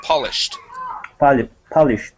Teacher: Almost get a T sound at the very end